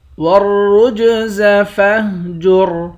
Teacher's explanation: را کو موٹا پڑھیں گے، جیم پر قلقلہ کریں گے، آخر میں را ہے، را ساکن ہے، اس را کو موٹا پڑھیں گے۔